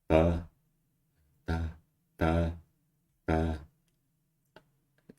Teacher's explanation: this is like a labiodental tap